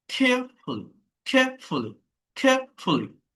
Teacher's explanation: অর্থাৎ এয়া, এয়া সাউন্ড, মানে এটা ডিপথং